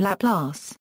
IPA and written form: ləˈplɑːs (Laplace)